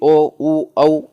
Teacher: ओ, उ, औ इनके उच्चारण में वृत्ताकार अपनी मुख की आकृति हो जाती है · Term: वृत्तिमुखी स्वर